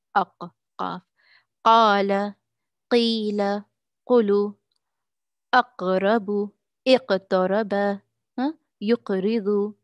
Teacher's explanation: The deepest portion, the part of the tongue. From the deepest part of the tongue, what lies opposite to it, of the roof of the mouth, is the soft palate.